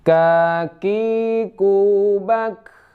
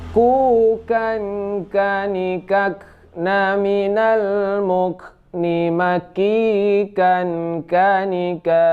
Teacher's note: Cara membacanya kakiku bak. Nah, ada sedikit angin yang keluar saat sukun. · Nah, selanjutnya yaitu huruf k ya. K ini ditenggorokan paling di lidah pangkal yang agak ke atas sedikit, yaitu k, ada sedikit angin ya.